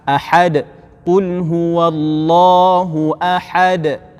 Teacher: Tapi bunyi sebutannya tu makhrajnya ahad, ha di sini, di tengah-tengah kerongkong bunyinya, makhrajnya ha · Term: ha pedas